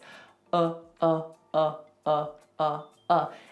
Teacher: It's just neutral. Nothing happens with the mouth. Nothing happens with the tongue. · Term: schwah